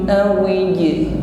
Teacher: Huruf jim sukun nampak sifat qalqalah, ada bunyi pantulan, jadi jangan ditahan.